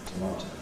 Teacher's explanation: stressed on the middle syllable. Reduction in the first, but not in the final. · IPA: təˈmɑːtəʊ, / təˈmɑːtəʊ /